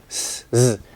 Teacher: Your tongue isn't really touching, it's coming close to that gum ridge area and it's creating friction. But for Z, there's vibration coming from your vocal cords.